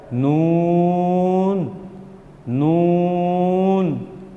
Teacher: زبان کا کنارہ جب ثنایا، رباعی اور انیاب کے مسروڑوں سے لگے تو یہ حرف ادا ہوتا ہے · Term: حروف طرفیہ